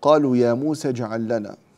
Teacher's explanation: هذه الألف في يا موسى لا نميلها لأنها طبعا في حالة الوصل، لأنها جاء بعدها حرف ساكن، فإذا التقى ساكنان وكان الأول منهما حرف مد سقط.